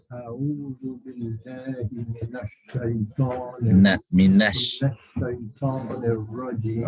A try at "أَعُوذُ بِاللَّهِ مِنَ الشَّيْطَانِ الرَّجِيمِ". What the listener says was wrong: The more important thing is the ayn. A'u. Okay, you've got to squeeze the ayn out a bit harder. A'udhu. A'u, and then it's zu.